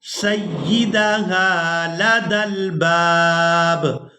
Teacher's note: با کو الف مدہ کی وجہ سے کھینچتے ہوئے دوسری با ساکن کے ساتھ ملائیں گے